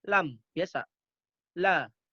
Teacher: Ujung lidah bertemu langit-langit di depannya langsung. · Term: Huruf lam